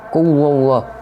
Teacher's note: merupakan tafkhim karena sebelum lafaz Allah terdapat huruf berharokat dhammah, membacanya dengan tebal